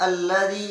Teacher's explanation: Alladzi, masih tetap zal tipis. Ya, kalian harus mengucapkan zal tipis yang keluarnya di ujung lidah